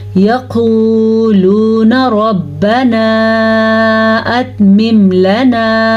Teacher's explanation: قاف کو موٹا یعنی کہ پر کر کے پڑھیں گے، اور واو مدہ یہاں پہ بھی ہے اور یہاں پہ بھی ہے، دونوں کو کھینچ کے پڑھیں گے.